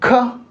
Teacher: जब बोलेंगे ख तो हवा ज्यादा निकलेगी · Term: महाप्राण